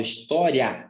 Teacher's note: você escuta mais o A. O I, ele está bem no fundo. Então, o A é a vogal.